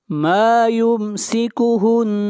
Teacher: اولم يروا الى الطير فوقهم صافات ويقبضن ما یمسکہن میم کے اوپر یہاں پر اظہار کریں گے، ہن نون کے اوپر شد ہے، غنہ ہوگا